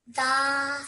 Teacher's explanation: you made that 2 seconds long because it has a vertical fatha on top of it.